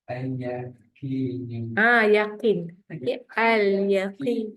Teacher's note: tetap ada bunyi lam sebab lam ada tanda sukun